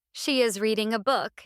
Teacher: Stress reading and book.